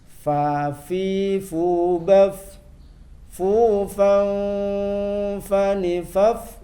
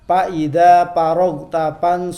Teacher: Fa keluar dari bibir, yaitu bibir bawah atau perut bibir bawah bertemu ujung gigi atas.